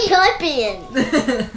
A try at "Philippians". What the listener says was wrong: PH. Oh yeah, hasn't learned the PH for. It's, PH sounds like F.